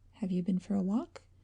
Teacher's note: there is a decided rise of pitch